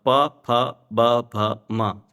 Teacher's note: आपके होठ स्पर्श करते हैं तभी ये बोल पाते हैं, अन्यथा नहीं बोल सकते हैं।